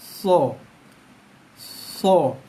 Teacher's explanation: Okey, kita ambil contoh huruf yang pertama yang saya tulis tadi, huruf so. So, hujung lidah sentuh belakang gigi bawah